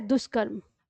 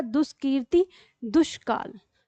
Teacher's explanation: विसर्ग क से मेल करने पे स्वयं को मूर्धा में बदल रहा है